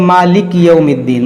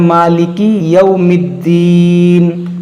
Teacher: मालिक यौमिद्दीन, मालिक, ये काफ को साकिन कर देते हैं, काफ को हमें साकिन नहीं करना है, इसको पढ़ना है मालिकी यौमिद्दीन।